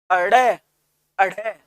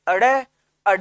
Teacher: तो अडय और अढय को जब हम बोलते हैं ना, तो आपकी जीभ ऊपर उठेगी और एक झटके से ध्वनि व वायु को बाहर फेंक देगी, अडय अढय, जीभ ऊपर उठी, अडय अढय, और एक झटके से ध्वनि व वायु को बाहर फेंक दिया, तो इसलिए इनको क्या कह दिया, उत्क्षिप्त व्यंजन।